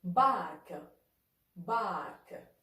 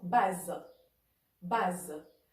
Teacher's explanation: Le A ouvert, comme dans bac, bac. Et le A fermé, comme dans base, base.